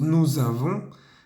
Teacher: Fíjense también que cuando decimos nous avons, hacemos la liaison entre la S del nous y la A del verbo avons